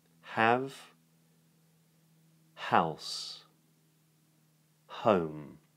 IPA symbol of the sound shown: h